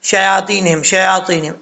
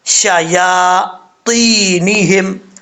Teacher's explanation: یا کا مخرج ہے زبان کا درمیان اوپر والے تالو کے درمیان سے لگے تو یا پڑھا جاتا ہے. شیاطینہم، طا حروف مصالحہ میں سے پر پڑھا جائے گا.